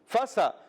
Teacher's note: فَسَتَعْلَمُونَ میں فا کی ادائیگی ہوتی ہے اوپر والے دانتوں کے کنارے, جب نیچے والے ہونٹ کے تر حصے سے لگتے ہیں تو ادا ہوتا ہے فا.